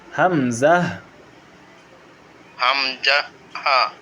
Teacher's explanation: এক নম্বর মাখরাজ হলকের শুরু হইতে